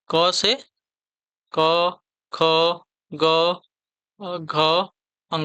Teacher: क का उच्चारण आपका कंठ होता है।